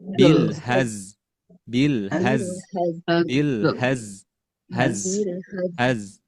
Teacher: ketika kita membaca hazah haz ini ada desisan yang keluar